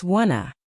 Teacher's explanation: The T in want to becomes soft or disappears completely. Want to becomes w to. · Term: connected speech